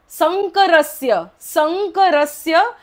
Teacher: स च्या वरचा अनुस्वार पुढे क असल्यामुळे न उच्चारण होतो